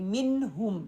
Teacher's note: نون کا ساؤنڈ آ رہا ہے لیکن اس کو کلیئر کر کے پڑھ رہی ہوں، اس پہ ہولڈ نہیں کر رہی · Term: اظہار